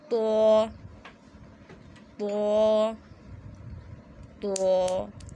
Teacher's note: بس آپ نے زبان کی جڑ کو اوپر کی طرف اٹھانا ہے، جس کی وجہ سے آپ کا تو موٹا ہو جائے گا